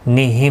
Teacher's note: میم ساکن کے بعد واو آیا، اظہار شفوی ہوگا